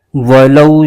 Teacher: واو ساکن سے پہلے زبر آ جائے تو واو لین ہوتا ہے، اس کو بغیر کھینچے پڑھنا ہوتا ہے